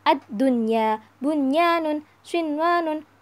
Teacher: dibacanya kita nggak boleh mendengung harus jelas · Akan tetapi jika dalam satu kalimat disebut sebagai idhar wajib. Dan dibacanya nggak boleh mendengung, harus jelas